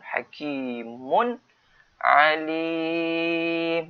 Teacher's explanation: Hakimun ni tanwin bertemu dengan ain, izhar harqi. Kena jelaskan hakimun alim.